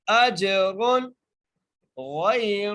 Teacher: حمزہ کو جیم سے ملائیں گے، جیم پر قلقلہ کریں گے کیونکہ جیم ساکن ہے · یہاں پر تنوین آ رہی ہے لیکن ہم غنہ را پر نہیں کریں گے، را کو موٹا ضرور کریں گے، را کو موٹا کر کے پڑھیں گے لیکن ہم غنہ یہاں پر بالکل نہیں کریں گے